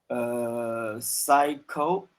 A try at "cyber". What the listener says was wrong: Cyber. Yeah, remember you're saying psycho, but there's no k after it. Like there's no k here, right? It's cyber, right?